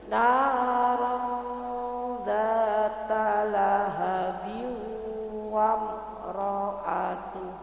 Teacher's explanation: jadi kita bacanya antara idhar dan idgham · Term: ikhfa